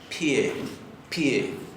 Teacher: dicen pie, pie, tie, como si tuviera una pequeña I en el medio